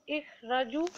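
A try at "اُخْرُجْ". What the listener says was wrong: Ukhruj. Ukhruj, because there is a dhamma on ra.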